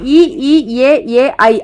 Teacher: இ இ ஏ ஏ ஐ ஆகிய 5 வாய் திறக்கும் முயற்சியுடன் நாக்கின் அடி ஓரமானது மேல்வாய் பல்லை பொருந்தும் முயற்சியில் பிறக்கின்றன